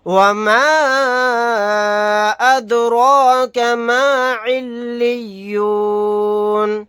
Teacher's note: دال ساکن ہے، دال کے اندر قلقلہ کریں گے